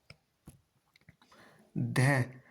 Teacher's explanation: धै वर्ण दंतीय वत्सल्य महाप्राण घोष व्यंजन वर्ण का उदाहरण है